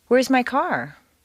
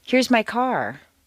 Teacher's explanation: a question rises a little higher than a statement with the same intonation pattern